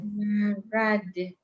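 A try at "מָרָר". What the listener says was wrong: Wait, that's a resh, not a dalit, though. Marar.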